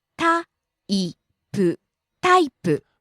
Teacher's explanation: falling on the second syllable E.